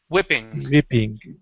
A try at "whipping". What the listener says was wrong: Let's use a short I. Wh. Instead of weeping, wh. Whipping.